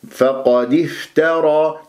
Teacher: الفاء من كلمة افترى لازم أبين بها الهمس